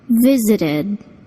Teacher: The ed verb ending sounds like id, visited.